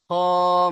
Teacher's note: খ মুখ গোল হবে, একালিপ টান হবে। এইটার জন্য মুখটা গোল হচ্ছে, এই যে স্টার দেওয়া রয়েছে।